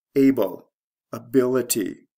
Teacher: the stress shift is from the first to second syllable